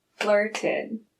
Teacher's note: I clapped twice on flirted because in the past tense, we add an extra syllable. And that's because the base verb, flirt, ends in a t sound.